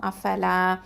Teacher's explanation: அலிஃப் மத்து, நம்ம 2 ஹரக்கத்தை நீட்டி தான் ஓதணும் · அஃபலா அப்படின்னு சொல்லும்போது ஹம்சா வந்து அக்கசல் ஹல்குலேருந்து வரணும், கீழ்த்தொண்டை. ஃப வந்து அதாவது ஷஃபத்தான் உதடு எழுத்து